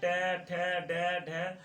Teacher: ट वर्ग, जितने भी ट वर्ग के वर्ण होते हैं, जितने भी ट वर्ग के वर्ण होते हैं, जैसे ट, ठ, ड, ढ, तो जब कहते हैं तो आपकी जीभ जो होती है वो मुड़ते हुए नजर आती है, तो इसीलिए इसे कहा जाता है मूर्धा।